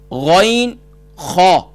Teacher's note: غین خا، یہ 2 حرف ہوئے جو ٹاپ آف تھروٹ سے ادا ہوتے ہیں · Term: حروف حلقیہ